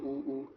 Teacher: वृत मतलब जो थोड़ा गोल सा बने, मुंह बोलते समय जो मुंह थोड़ा गोल सा बनेगा, वो वृतमुखी हो जाएगा